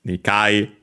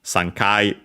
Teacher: All accent on the K of Kai.